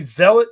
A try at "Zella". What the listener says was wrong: Zella, I think. I think the French T is silent. You drop the first and last.